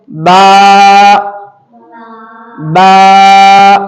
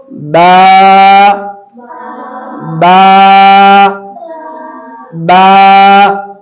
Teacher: बा अदा होता है दोनों होठों की तरी वाला हिस्सा, गीला वाला हिस्सा। तो जब भी हमको बा अदा करना है, तो हमारा फोकस ध्यान किस पर होना चाहिए?